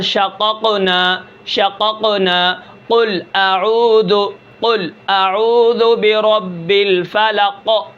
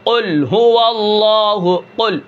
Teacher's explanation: جب زبان کی جڑ اوپر کے تالو کے ساتھ لگے گی تو وہاں سے قاف ادا ہوگا